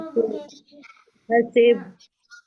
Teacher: تو اب با کی آواز کو ہلا دیں وقف کی صورت میں